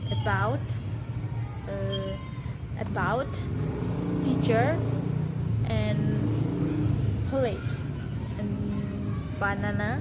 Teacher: Karakter bunyinya seperti bunyi eu. E sangat lemah, pendek, dan tidak ditekan. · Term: swa